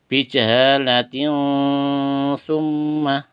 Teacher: ada tanwin bertemu dengan sa, harus samar-samar. Ikhfa ya.